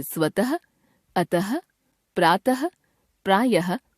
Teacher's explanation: हिंदी में विसर्ग का उच्चारण समाप्त हो चुका है, इसे भी अब ह के रूप में ही बोला जाता है